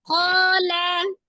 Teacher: ko itu 2 harokat. Ada alif sebelumnya fathah di huruf qaf. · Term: Matobi'i alif